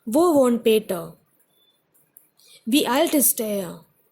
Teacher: although it is a question, it is a WH question, so we tend to take the intonation down.